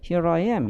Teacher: 이거는 조음의 용이성, 조음을 좀 더 쉽게 하고자 하는 자연스러운 현상으로 우리가 볼 수가 있는데 here I am 이렇게 이제 R 사운드가 연결이 된다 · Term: 링킹 R